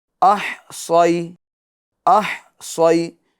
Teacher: ایک تو بڑی ہا ادا کریں گے درمیان حلق سے، اس طرح نہیں، یہ 2 چشمے والی ہا کی آواز ہوئی، یہ غلط ہے.